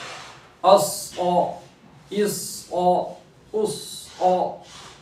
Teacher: اب حرف مستعلیہ میں سے ہے صاد تو اس کو پور کریں گے